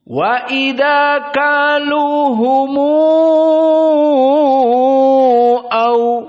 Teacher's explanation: dipanjangkan al-isba' menjadi 6 harokat